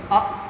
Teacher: اب دیکھیے یہ وہی تیسرا نمبر کا قاعدہ اس میں لگے گا کہ یہ حمزہ ساکن ہے، اس حمزہ ساکن کو ہمیشہ جھٹکا دے کر ادا کریں